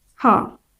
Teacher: जब हम हा का उच्चारण कर रहे हैं तो हमारे स्वर तंत्र में कंपन हो रही है। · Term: सघोष व्यंजन